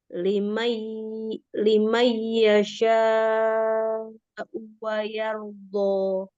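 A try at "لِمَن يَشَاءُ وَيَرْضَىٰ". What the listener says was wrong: Wayardo, donya dibuka, jangan dimajukan begini.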